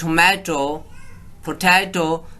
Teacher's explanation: refer to the vowels that have been changed to the schwa, or they are realized similar to schwa instead of their own real form